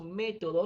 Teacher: Si dividimos método en tres sílabas, me, to, do, me sería la sílaba fuerte y contamos última, penúltima, antepenúltima.